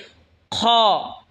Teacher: খ হলকের শেষ ভাগ হয়তো উচ্চারণ হবে খ